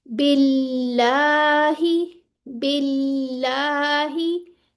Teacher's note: दोनों लाम मुरक्कक या बारीक पढ़े जाएंगे।